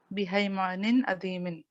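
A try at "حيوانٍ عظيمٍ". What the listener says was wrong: हाँ, और हैवान नहीं, हयावानिन, हयावानिन अजीमिन। या को भी जबर दें, ये इस तरह।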